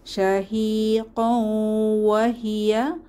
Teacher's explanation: শাহি কৌ, এখানে ইদগম উইদ গুন্নাহ, তানবিনের পরে ওয়াও এসেছে, তাহলে গুন্নাহ সহ মিলিয়ে পড়তে হবে।